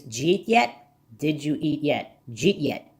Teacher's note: One might hear a J sound, but the speaker is running a D and a Y, so it only resembles a J sound.